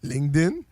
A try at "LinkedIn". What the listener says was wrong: Il y a pas de G! Il y a pas de G. C'est pas LinkedIn. LinkedIn.